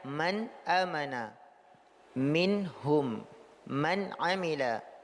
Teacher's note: Ini pada izhar nunnya jelas diucapkan secara sempurna.